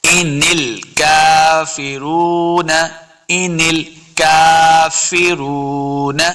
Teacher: کاف کے اوپر کھڑی زبر ہے، اس کو دو حرکات لمبا کرنا ہے